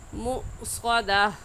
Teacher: مؤصدہ میں حمزہ ساکن ہے تو ہلکا سا جھٹکا دے کر پڑھیں گے